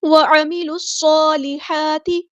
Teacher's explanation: اور ہا کو وسط حرکت میڈل تھروٹ سے ادا کرنا ہے